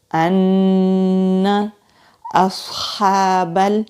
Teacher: صاد مستعلیہ حروف میں سے ہے، مستعلیہ موٹے حروف کو کہتے ہیں، تو صاد کو موٹا پڑھیں گے۔